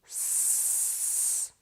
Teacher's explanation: Put your hand on your voice box and say S. You'll feel that there is no vibration from your voice box. This is because S is unvoiced.